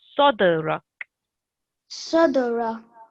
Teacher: this dal is one of the jerking sounds. So you need to bounce off it.